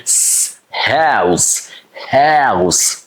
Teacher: Like we have Houston, Houston, or we simply say house, house, or sometimes we say squeak, squeak, yeah, mouse, mouse, not mouse. Ow, mouse, OU is a ow, and then S sharp, and this S is unvoiced, and you say s, house, house.